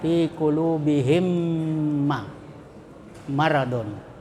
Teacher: Cara membacanya adalah menyuarakan mim rangkap, jadi dua mim rangkap atau ditasdidkan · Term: idgham mimi